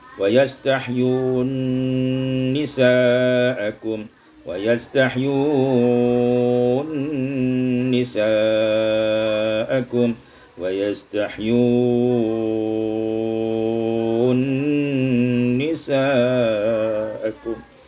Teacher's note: Wa yastahyuna nisa'akum, idgham nun fin nun, diidghamkan nun pada nun